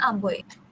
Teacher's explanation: diftong oi iaitu vokal belakang separuh tinggi manakala vokal depannya tinggi